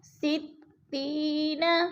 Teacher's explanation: یا ساکن سے پہلے تا کے نیچے زیر ہے تو یا مدہ، یا مدہ کو ہم نے ایک الف دو حرکات کے برابر لمبا کر کے پڑھنا ہے